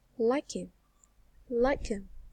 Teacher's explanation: you link like with him